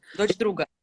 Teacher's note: in like fast speech. You voice your ch, and this is assimilation because it's a regressive assimilation in Russian.